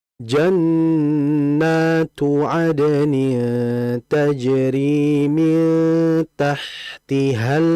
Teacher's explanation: hati-hati pada lam sifatnya yaitu mengalir